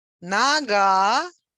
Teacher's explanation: Нога, stress on the last syllable means leg.